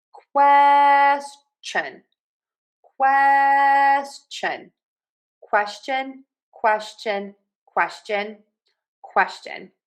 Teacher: for question, we actually say a ch sound, not the sh.